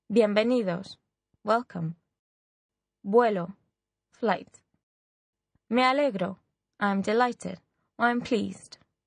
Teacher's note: all these words are stressed on the penultimate syllable in other words the second to last syllable